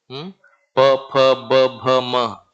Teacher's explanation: all these things we have to close our lips and produce